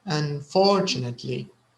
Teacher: yeah because it sounds like unfortunately so there is a no the stress is on the second syllable